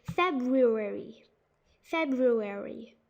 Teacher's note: a lot of people kind of forget to add that r after the b